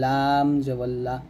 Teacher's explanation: তারপর লাম হরফটা আমরা জিহ্বার আগা সামনের উপরে মারি দাঁতের সঙ্গে লাগাবো, জিহ্বার আগার কিনারা, লাম উচ্চারণ করার সময় জিহ্বার আগার কিনারা উপরের মারি দাঁতের গোড়ার সঙ্গে লাগিয়ে লামটা উচ্চারণ করতে হবে, লাম জবল্লা।